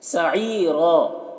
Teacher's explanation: یا مدہ ہے، اسے ایک الف کے برابر کھینچ کر پڑھیں گے